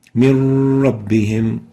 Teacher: We merge the still noon into the ra, producing a stressed ra, ra with shadda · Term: idgham without gunna